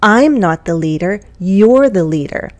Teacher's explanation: I'm stressing these contractions the vowel sounds are very full and carefully pronounced